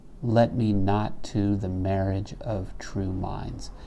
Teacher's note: So here we have the case of demotion. So we have 2 weaks with one given a slighter stress and 2 strongs, one given a slightly weaker stress. If we numbered this out, you would see that this would be 1, 4, 1, 2, 3, 4, and you can hear it.